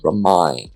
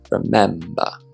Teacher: Remind has an I sound, remind. Whereas remember has an E sound, remember.